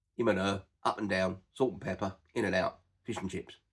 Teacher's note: We don't tend to pronounce the word and. We drop the A and the D, and we just use n.